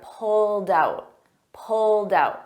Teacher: it ends in a soft D but because I have a vowel I combine those together